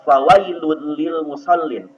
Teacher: idgham tetapi tidak boleh dibaca mendengung, melainkan cara membacanya yaitu huruf yang pertama dimasukkan ke dalam huruf yang kedua. Huruf yang pertama dimasukkan kepada huruf yang kedua seolah-olah seperti huruf yang bertasjid. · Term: idgham bila gunnah